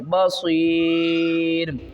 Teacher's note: یہ دیکھیں را کو ہم نے ساکن کیا، اس سے پہلے یا ساکن سے پہلے زیر ہے تو ہم اسے 3 الف کی مقدار کھینچ کر پڑھیں گے